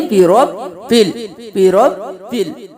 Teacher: با پہ تھوڑا سا اسٹے کریں گے کیونکہ یہاں پہ تشدید ہے تو ہم بربل نہیں کریں گے، بربل، بربل۔